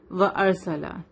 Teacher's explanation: وَأَرْسَلَ. را ہیوی ہوگا کیونکہ را کے پہلے کیا ہے؟ زبر ہے